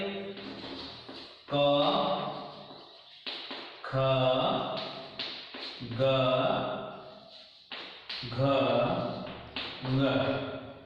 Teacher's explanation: इनका उच्चारण स्थान कंठ होता है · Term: कंठ्य वर्ण